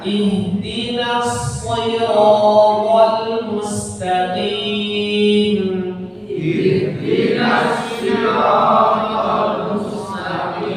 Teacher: Huruf yang pertama itu ha, hanya dibaca tebal, bukan ha yang tipis. Jadi bukan ihdina, maksudnya huruf ha nanti dari pangkal atau tenggorokan bagian bawah.